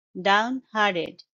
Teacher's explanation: stress is on the second syllable hard hardened down harded and the T sound is not very strong T it's more like d in the end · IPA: /ˌdaʊnˈhɑːr.t̬ɪd/